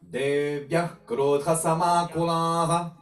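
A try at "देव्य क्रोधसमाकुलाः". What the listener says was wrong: Devya or Devyah? Devya. Okay, so the second change here is Devya Krodha without Devyah.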